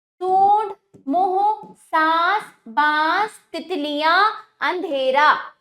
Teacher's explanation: वायु मुंह और नाक दोनों के मार्गों से बाहर निकलती है। आपकी जो वायु यानी जब आपकी वायु निकलेगी तभी तो आपकी ध्वनि उत्पन्न होगी, तो मुख और नाक दोनों से ही निकलती है। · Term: अनुनासिक